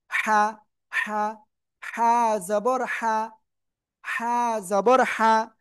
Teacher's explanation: গলা চেপে আপনাদের পড়তে হবে কিন্তু, মুখ দিয়ে হালকা বাতাস বের করে